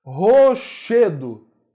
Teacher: Che é mais forte. Palavra paroxítona também.